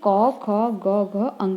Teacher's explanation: क वर्ग का उच्चारण स्थान कौन सा है हमारा? कंठ।